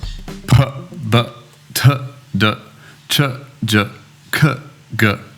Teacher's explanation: these are all called plosive sounds, so they're like small explosions in your mouth. You're stopping the air and releasing. And once again, it's showing you the position of your mouth.